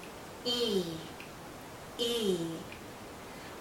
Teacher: our lips are very spread very pulled out and this is a long vowel sound so think of your lips being pulled out like the vowel